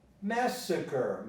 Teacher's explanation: Massacre takes the stress on the first part, so the pronunciation changes.